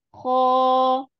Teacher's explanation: ko tetap mengangkat pangkal lidah